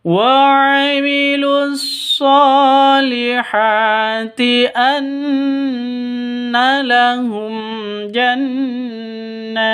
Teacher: sh panjang dua ketukan karena ada alif. Ini alif diawali dengan fathah atau alif sebelumnya fathah.